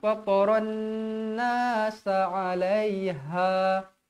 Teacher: Fataran wajib dibaca dengung 2 harakat. Wajibul gunnah.